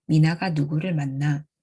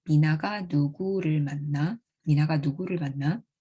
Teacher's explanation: On the other hand, when the WH word in this sentence is interpreted as an interrogative and the sentence gets WH question reading, the WH phrase 누구를 and the following word 만나 form a single big accentual phrase. Now this big AP has 5 syllables, so the full LH tones are realized, so the pitch contour changes and the sentence sounds like 미나가 누구를 만나?